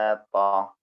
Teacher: താ ഇസ്തിലാന്റെ അക്ഷരം കൂടിയാണ് പിന്നെ തഫ് ആയിട്ട് പറയേണ്ട അക്ഷരമാണ്